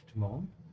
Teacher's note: whenever the S comes before a T, it's pronounced like a sh.